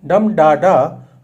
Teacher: the dactyl, a stressed syllable followed by two unstressed dumb da da rolls like a wave, equally suited for epic grandeier and tender melancholy.